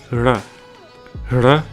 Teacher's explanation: typically this is a rolled R sound